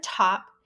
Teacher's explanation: It's a voiceless alveolar, as in top.